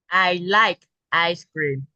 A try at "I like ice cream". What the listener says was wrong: Oh, I didn't hear the K because there was like a computer glitch, Toby.